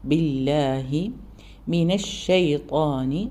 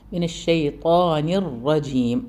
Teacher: ഷീന് നന്നായി വായി അതിനുള്ളിൽ സ്പ്രെഡ് ആകുന്ന രീതിയിൽ തന്നെ സൗണ്ട് കൃത്യമായി പറയുക